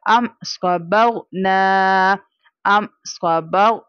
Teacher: और यहाँ पर हम मीम साकिना के बाद चूंकि सौद लेटर है, सौद लेटर ना, जब भी मीम साकिना के बाद ना बा लेटर हो ना दूसरी मीम आए, इसके अलावा कोई लेटर है, जैसे यहाँ सौद आ गया, हमें यहाँ पर क्या करना है, इजहार शफवी करना है, यानी बगैर गुन्ना के पढ़ना है।